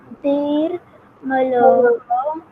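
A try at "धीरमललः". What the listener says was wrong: Not malaha. This is two la. Half la and then la. So this is dhir mallaha.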